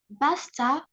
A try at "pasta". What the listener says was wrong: Ba. Is that ba or P? Yes, it's a P. You always confuse P with B. Pasta.